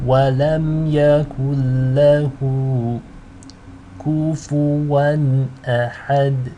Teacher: The ha actually has a elongation. You want to read this twice as long.